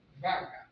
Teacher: Un español tal vez dirá vaca, con B labidental. Nosotros la diremos con B bilabial, vaca.